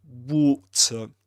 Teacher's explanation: accent, Southern Standard British English, water, with his long O sound and a schwa at the end